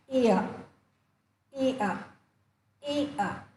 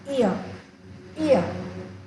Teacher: the tongue first takes the position required for the first sound e and then immediately the tongue takes the position required for the articulation of the second sound uh